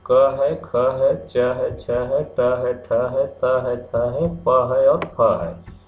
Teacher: एक जो संगीत में नाद जो होता है उस तरह का झंकार नहीं होता, केवल हवा का उपयोग होता है, इसीलिए इन्हें अघोष कहते हैं। · जब इनको बोलते हैं तो झंकार नहीं होती है, बल्कि केवल हवा मुंह से निकलती है, केवल सांस का उपयोग करते हैं।